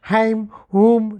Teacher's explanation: ध्वनियाँ मुख बंद किए हुए भी केवल नाक से बोली जाती है